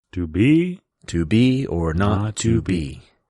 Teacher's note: You have the iamb, which is unstressed, stressed.